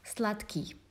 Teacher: D lost its voice, and instead of her voiceless pair is pronounced T instead of D.